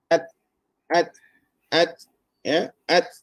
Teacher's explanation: kita tak boleh cakap ats, anginnya tu kita tak boleh panjang. · Jadi ta ini duduk di syiddah. Apa maksud di syiddah? Ialah tertahan suara. Sebab itu bila kita baca, kita tak boleh ads, anginnya tu kita tak boleh panjang.